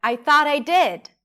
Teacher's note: Stress is on did. That's a lax a sound. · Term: lax I sound